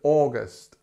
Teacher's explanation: it has this long OR sound at the beginning, which is stressed and it's long, August. And then we have our famous schwa here, August, August.